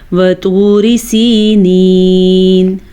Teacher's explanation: را کو باریک پڑھیں گے، کیوں؟ کیونکہ را کے نیچے زیر آ گئی ہے۔ جب را پہ زبر یا پیش ہو تو ہی را پر پڑھی جاتی ہے، را کے نیچے اگر زیر ہو تو را باریک پڑھی جاتی ہے۔